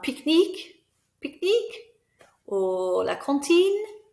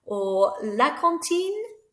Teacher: just make your voice go up and it makes it a question